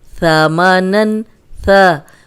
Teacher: اب ثا جو ہے وہ سیٹی کے بغیر ہے، اس میں ذرا بھی سیٹی کی آواز نہیں آنی چاہیے